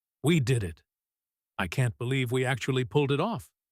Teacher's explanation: Her voice is soft. The pauses are long. She is reflecting.